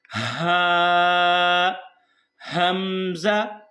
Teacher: हमजा और हा दोनों गले के शुरू से अदा होते हैं तो हमारा गला जो है यह सीने से शुरू होता है